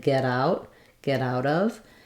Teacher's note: in get out of we link the get to the out it also becomes a flap sounds more like get out get out of and we also